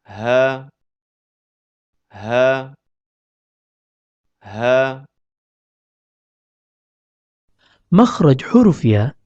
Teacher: huruf H keluar dari pangkal tenggorokan